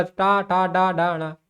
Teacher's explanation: टा वर्ग का उच्चारण स्थान मूर्धा है। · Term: मूर्धन ध्वनियां